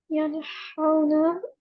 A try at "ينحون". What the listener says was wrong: Yeah, make the ha more deeper. Yanhaun.